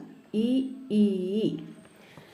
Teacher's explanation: താലവ്യം അഥവാ അണ്ണാക്കിൻ്റെ സഹായത്താൽ ഉച്ചരിക്കുന്നവയാണ് ഇ, ഈ